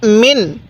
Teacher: এই নুন সাকিনটা স্পষ্ট করে পড়বো কারণ নুন সাকিনের পরে আইনটি হলো ইজহারের হরফ